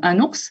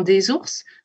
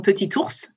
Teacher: les consonnes les plus fréquentes sont le ne, qu'on a par exemple dans un ours, le ze dans des ours, ou le te dans petit ours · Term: liaison